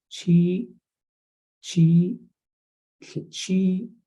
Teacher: you have a little stop at the end